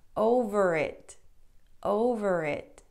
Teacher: those two words are linked. The R in over goes into the I of it.